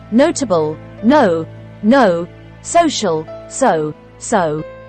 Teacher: The O sounds long when it falls at the end of a stressed syllable. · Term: long O